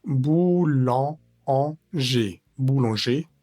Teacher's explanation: tiene una vocal nasal y es la an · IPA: [ɑ̃]